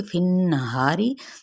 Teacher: نون پہ غنہ کیا جائے گا، فا کی زیر کو نون کے ساتھ ملاتے ہوئے غنہ کریں گے